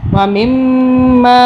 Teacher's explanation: یہاں میم کے اوپر تشدید ہے، ہم نے غنہ کیا 2 سیکنڈ کا، چھوٹی مدہ ہے، 3 الف کے برابر کھینچا۔